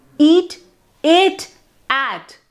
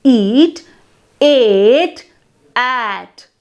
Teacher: the degree of the openness of its vowel falls between those of eat and at. So there is a continuous increase in mouth openness as you go from one vowel to another. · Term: degrees of openness